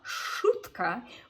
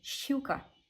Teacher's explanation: a sh is always soft, therefore making the following vowel have a y sound in front of it.